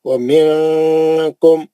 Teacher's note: نون ساکن کا اخفا حرف کاف